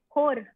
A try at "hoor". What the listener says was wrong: You can say it normally. You don't always have to roll your R.